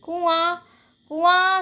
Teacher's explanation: कुआं शब्द में आ शब्द जब हम बोलते हैं तो हमारे मुख और नाक दोनों से ही साउंड आती है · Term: अनुनासिक